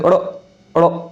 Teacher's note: जीभ ऊपर उठकर मूर्धा को स्पर्श करके झटके से नीचे आए उच्छिप्त व्यंजन होते हैं। इन दोनों व्यंजनों को बोलने में, जब हम कहते हैं अड़ अड़ बोल दिया, अगर आप बोलेंगे तो जीभ पहले आपके मूर्धा ऊपर लगेगी, जाके झटके से नीचे आएगी। · अगर आप बोलेंगे तो जीभ पहले आपके मूर्धा ऊपर लगेगी, जाके झटके से नीचे आएगी। जीभ उच्छिप्त होती है इनके बोलने में, इसलिए इनको उच्छिप्त व्यंजन कहते हैं।